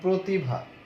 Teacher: পরবর্তী রস্যই রস্যুর প্রভাবে পূর্ববর্তী রফলাযুক্ত অ সংবৃত হয়ে ও এর মতো উচ্চারিত হবে